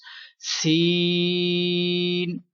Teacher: Sin is superior letter and pronounced with whistle and stretch equal to 3 seconds.